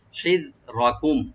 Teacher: খেয়াল করে পড়তে হবে, হিযরাকুম, হাটাকে রাইট দিবেন, জালটাকেও রাইট দিবেন, রা এখানে ডিপ হয়ে পড়বে, মানে মোটা মোটা করে পড়া হবে ডিপ করে